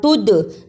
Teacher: دال جزم کی صورت میں حرف قلقلہ ہے یہاں آواز پلٹ کر آئی